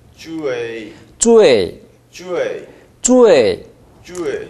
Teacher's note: 높은 데서 시작해야 사성이 납니다. 쭈에, 쭈에. 네, 더 높은 데서 시작해 보십시오.